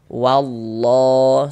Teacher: lafaz Allah yang sebelumnya tanda baca fathah maka lafaz Allahnya kita baca tebal